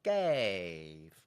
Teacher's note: for gave because it's one syllable I'm coming down on that one syllable